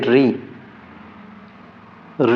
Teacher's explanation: ऋ का उच्चारण होता है मूर्धन से